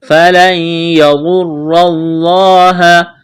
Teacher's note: نون ساکن کے بعد یا ہے، نون کا یا میں ادغام کریں گے، یہاں پر ادغام کا قاعدہ جاری ہوگا، غنہ کریں گے